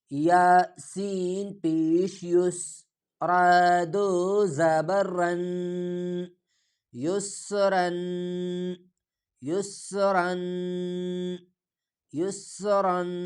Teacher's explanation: اگلا لفظ یا سین پیش یس، یا سین پیش یس، پہلا یا پہ پیش، سین پہ جزم، یا سین پیش یس، را دو زبر رن، را کے ساتھ جو الف لکھا ہے یہ بھی پڑھا نہیں جاتا، صرف عربی رسم الخط میں لکھا جاتا ہے، اور را کو موٹا کر کے پور کر کے پڑھا جائے گا